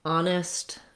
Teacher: Honest also just begins with the ah sound of the letter O, no H sound.